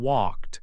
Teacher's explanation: For example, in walked, the K sound is voiceless, so walked ends with a T sound